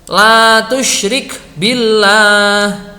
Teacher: lamnya lafadz Allahu setelah kasrah dibaca tipis